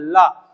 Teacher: तो क्या होता है, जवान हवा रोकती है, लेकिन हवा जो होती है पार्श्व बनाती है, आके जीभ के इधर से और उधर से निकल जाती है, और जब पार्श्व से निकलती है तो ला वर्ण का उच्चारण आता है, ला, और यही ला पार्श्विक कहलाता है।